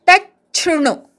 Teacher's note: त वर आघात घेऊन च जोडून म्हणायचा आणि मग शृणु, तच्छृणु. च छ असा उच्चार ऐकू आला पाहिजे.